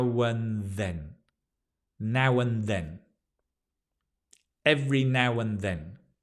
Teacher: notice the and becomes un